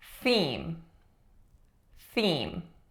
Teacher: a voiceless th there and if we substitute it with an s we will get seem